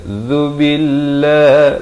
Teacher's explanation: lafaz jalalah dibaca nipis dua harakat